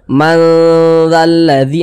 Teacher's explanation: kita samarkan kemudian kita dengungkan karena dia didengungkan maka suaranya itu kita tahan kita tahan kita panjangkan sejenak manalladzi di bagian Ma itu kita tahan kita panjangkan sejenak manalladzi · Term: dengungan